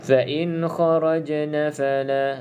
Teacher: qalqalah sughra, qalqalah yang kecil. Jadi lantunan dia tu sedikit ataupun kecil je. Fa in kharajna fala, dia ringan sikit bunyi dia kan.